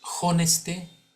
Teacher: la H no es muda en el latín la H se pronuncia como una J